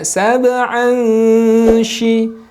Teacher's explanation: Maka ketika sahabat menemukan tanwin atau nun sakinah nanti yang berwarna hijau, silakan bacakan dengan menyamarkan bacaan tersebut dan tahan 2 harokat, jangan tergesa-gesa.